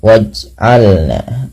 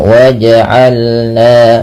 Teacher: Pantulkan bunyi suara pada lafal huruf jim yang berharakat sukun. Ah, apabila ada huruf dia berharakat sukun tandanya seperti ini. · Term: dipantulkan